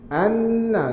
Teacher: dengung akmal. Dengung paling sempurna.